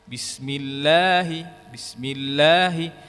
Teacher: durasi yang ada pada 2 harakat, bismillahi, bismillahi, ini seperti pengucapan 2 huruf yang berjajar.